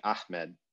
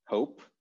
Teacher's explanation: there's a lot of disagreement about whether this is a pharyngeal or a glottal h